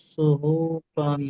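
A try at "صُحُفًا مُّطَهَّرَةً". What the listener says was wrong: সুহুফান নাই, ফাম, মিমের সঙ্গে ফাটা মিমের সঙ্গে জুড়বে, সুহুফাম।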